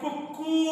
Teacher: ಕು ಒತ್ತಕ್ಷರ ಪಡೆದದ್ದು ಅದು ಹೆಚ್ಚು ಉಚ್ಚಾರಣೆಯನ್ನು ಪಡೆಯುತ್ತೆ ಕೋಳಿ ಕುಕು ಕು ಹಾಗಾದರೆ ಕು ಅನ್ನುವಂತಹ ಕೊನೆಯ ಕೂವನ್ನ ನಾವು ಅತಿಯಾಗಿ ಎಳೆದು ಹೇಳಿದ್ದೇವೆ